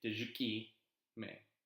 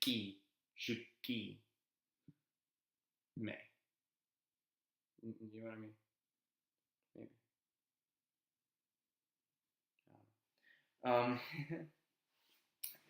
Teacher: when you're pronouncing the apostrophe you kind of stop the sound and then you keep going